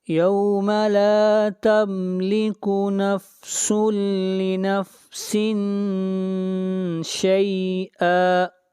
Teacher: سین کو ملائیں گے لام کے ساتھ، یہاں پر تنوین کے بعد حروف یرملون میں سے لام ہے، ادغام بلا غنہ ہوگا